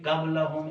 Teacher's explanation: کاف اور قاف قاف اس کو فل ماؤتھ پڑھنا ہے